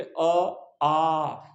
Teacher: जैसे ये देखो, जैसे मान लीजिए अ है और एक हो गया आ हो गया, तो अब जब हम अ का उच्चारण करते तो हम बोलते अ आ, तो आ में डबल समय लग रहा है ना, अ से अपेक्षाकृत अधिक समय लग रहा है